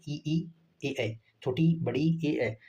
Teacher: अग्रस्वर जीभ के आगे वाले हिस्से से उच्चरित होता है।